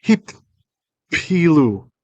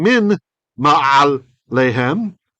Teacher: Here again, an N sound assimilated. Instead of saying min ma'al lehem, we say mim ma'al lehem.